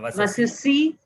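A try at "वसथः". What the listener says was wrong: Thakara. It becomes a thakara. Vasataha.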